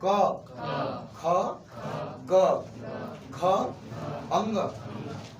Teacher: जीभ का अंतिम सिरा कंठ में टच कर रहा है।